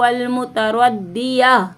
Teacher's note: हमारी सांस टूट गई तो हमने गोल ता को हाँ में बदल दिया